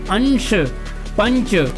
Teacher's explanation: आवाज़ जो है वो नाक के अंदर जा रही है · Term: अनुस्वार